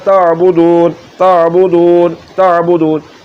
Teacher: عین کے نکلنے کی جگہ حلق کا درمیان والا حصہ ہے، اور حمزہ کے نکلنے کی جگہ حلق کا نیچے والا حصہ ہے۔